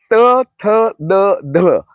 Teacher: त थ द ध हे दात आणि हिरडी जिथे चिकटली जाते तिथे जिभेचा स्पर्श झाल्यानंतर उच्चारले जातात